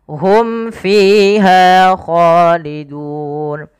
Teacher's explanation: Mim mati bertemu fa, jelaskan mimnya karena dia izhar